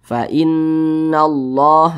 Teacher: Syamsiyah karena cara membaca huruf lamnya ini dia dibaca idgham Jadi huruf lamnya ini dia tidak dibaca langsung masuk ke huruf yang di depannya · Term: Idgham Syamsiyah, idgham syamsiyah